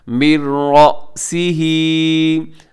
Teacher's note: रअसिही को झटके के साथ पढ़िएगा क्योंकि इसमें इसके दरमियान में हमजा है, रा ज़बर हमजा, रा मोटा भी रखिएगा।